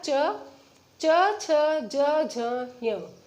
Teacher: च, छ, ज, झ, य, ये भी हमारे 5 हो गए और इसका उच्चारण स्थल क्या है? तालु।